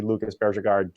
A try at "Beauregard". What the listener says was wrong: Beauregard. You're saying it like fucking Davis. Beauregard. He's not French. He doesn't have a soft J in his name, for Christ's sake. It's Beauregard.